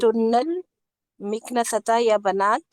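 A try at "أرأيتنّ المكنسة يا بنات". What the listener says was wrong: या बनात या बनात, बनात के आखिर में जबर देर पढ़िए जरा।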